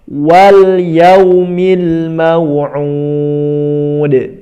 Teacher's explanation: Mau'ud, udnya mad arid disukun ya, dalnya diqalqalahkan.